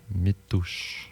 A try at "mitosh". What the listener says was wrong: mitosh. Le U se prononce pas. Mitosh.